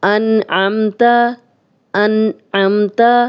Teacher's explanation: من اب نون ساکن ہے، آگے آئین آ گیا، ہم غنہ نہیں کر رہے۔ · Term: اظہار حلقی